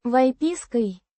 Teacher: with emphasis on the Pis. syllable